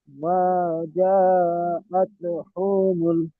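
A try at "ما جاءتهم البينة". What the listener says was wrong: হু টান হবে না, হুমুল বাইয়িনা। হু এখানে হু টান হয়ে যাচ্ছে। আতু হুমুল, হুমুল জলদি।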